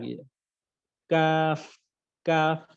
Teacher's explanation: এটা একদম সিম্পল, সহজ। জিহ্বার গোড়া থেকে একটু আগে বাড়িয়ে তার বরাবর পরের তালুর সাথে লাগিয়ে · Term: পাঁচ নম্বর মাখরাজে